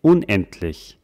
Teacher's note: Man hört ja hier ein T, aber man schreibt es mit einem D.